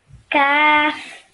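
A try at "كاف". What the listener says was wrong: Perfect. Well done. You said that really nicely with a nice big smile.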